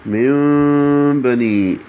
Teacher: نون ساکن کے بعد با آنے کی وجہ سے اقلاب ہو رہا ہے۔ من بنی، ہونٹوں کو قریب لائیں گے اور ملائیں گے نہیں، با میں ملا دیں گے، اس کو اقلاب کرنا کہتے ہیں، ابدال بھی اس کو کہتے ہیں۔